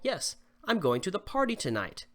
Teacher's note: Your voice will fall on the word tonight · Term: falling intonation